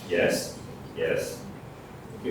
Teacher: most people would think that the pitch is just rising, the pitch is actually falling and rising